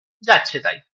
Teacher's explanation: একই রকমভাবে যাহা ইচ্ছা তাই বা যা ইচ্ছা তাই এই পুরো শব্দটা না বলে এটাকে আমরা সংক্ষিপ্ত করে দ্রুত উচ্চারণ করে বলি যাচ্ছে তাই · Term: সংকোচন